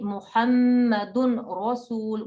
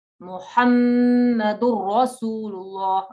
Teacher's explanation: So we learned the rule of idgham kamil, complete merging, assimilation, complete blending of the n sound.